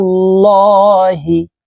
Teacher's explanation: আল্লাহ শব্দের আগের হরফে পেশ আছে এই কারণে এই লামকে ল অর্থাৎ মোটা ভাবে পড়তে হবে